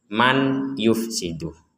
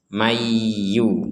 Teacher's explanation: Di sini ada nun sukun bertemu ya, kita membacanya mendengung. Jangan dibaca jelas. Kalau dibaca jelas menjadi man yufsidu.